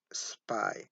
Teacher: in this case we don't have any release of breath